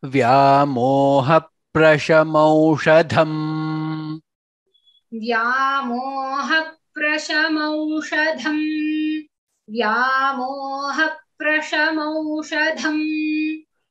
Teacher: Vyamoha, vya, it is va, ya, vyamoha, prashamaushadham, dha mahaprana. Aushadham, everywhere it is dha is mahaprana.